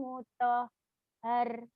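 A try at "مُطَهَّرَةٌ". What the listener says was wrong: mutahharoh. Itu ada tak marbutoh. Kalau nggak ada tak mutah betul mutahhar ya ini mutahharoh.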